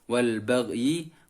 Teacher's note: gha disukun dan suaranya mengarah ke kasroh, bibir disenyumkan